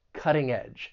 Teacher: the stress is going to be on that first syllable and that T I am going to pronounce this as a flap T which is very common when talking about the American accent because that t comes between two vowel sounds